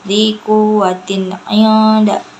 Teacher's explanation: ikhfa hakiki karena nun sukun bertemu dengan dal, cara bacanya itu samar